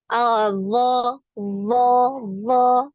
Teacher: Ini huruf zo ini tertahan, jadi tidak ada aliran nafasnya, ya. Zo, zo, zo, ya, tidak ada aliran nafas, ya.